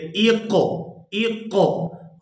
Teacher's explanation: یہاں قاف کے اوپر جزم ہے تو یہاں قاف اس کے اوپر ہم قلقلہ کریں گے